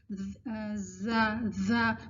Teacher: جسے اگر آپ لوگ جب ہمس کو اور جہر کو ریوائز کریں گے تو آپ کو پتہ چلے گا کہ جو زا کی صفت ہے وہ جہر کی ہے. اس کو ہم سین کی طرح ہمس نہیں اس میں دیں گے، ہوا نہیں ہوگی